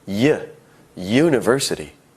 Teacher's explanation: University starts with a U, a vowel. However, it sounds like it starts with a Y.